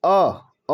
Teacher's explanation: इसके उच्चारण में जीभ का मध्य भाग थोड़ा सा ऊपर उठता है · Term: केंद्रीय स्वर